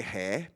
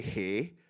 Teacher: We have a very open air sound, which you don't have in MUI